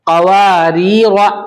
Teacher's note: पहला रा बारीक, दूसरा रा मोटा। क़वारीर, यहां पर जो दूसरे वाले रा के बाद जो अलिफ है क़वारीर लिखा हुआ है, तो ये जो अलिफ है इस पर क्रॉस का निशान है, इसको नहीं पढ़ेंगे अलिफ को, अलिफ साइलेंट।